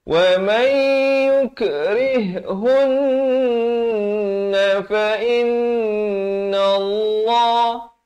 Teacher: Wa may, dia gitu, dia tak baca waman, dia baca wa may yukrihunna fa inna Allah. Di sini nun sabdu dua kali, masing-masingnya didengungkan dua harakat